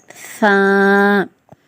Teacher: நுனி நாக்கு மட்டும் கொஞ்சம் வாயை விட்டு வெளிய வந்து ஊதணும்